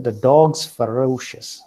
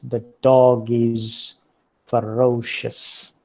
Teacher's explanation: they would not say it the dog is ferocious but pronounce it as the dog's ferocious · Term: weak forms